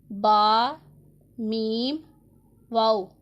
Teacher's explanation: बा दोनों होंठों के तर हिस्सा से, मीम दोनों होंठों के खुश्क हिस्से से और वाओ दोनों होंठों की गुलाई से अदा होता है। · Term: हरूफ शफ़विया